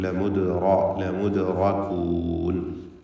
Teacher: നൂൻ മുഷദ്ദദ. ലമുദ്റകൂൻ ദാലിൻ്റെ സുക്കൂൻ ഖൽഖല സൂറ നൽകി ശബ്ദം ഹറക്കത്ത് പോലെ ചലിപ്പിക്കണം. റാഇന് തഫ്ഖീം കൊടുക്കണം.